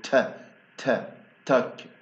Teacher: التاء في بداية الكلمة بكون aspirated، يعني بطلع مع هواء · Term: aspirated T